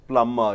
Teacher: this b sound is silenced